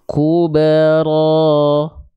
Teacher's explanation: tuh ya ayatnya Kubro nah RO di sini RO di sini dia mesti dibaca dengan kadar panjang dua harakat